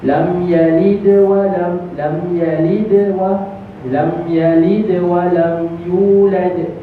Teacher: Qalqalah tu ada tapi dia tidak memberhentikan suara kita. Suara kita terus berjalan. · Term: qalqalah yang kecil